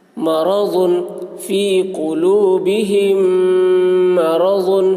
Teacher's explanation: میم ساکن کے بعد میم آ رہا ہے اس لیے میم کو میم سے ملا کر غنہ کے ساتھ پڑھیں گے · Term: ادغام شفوی